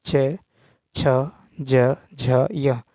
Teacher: च वर्ग यानी च छ ज झ य का उच्चारण स्थान भी तालू है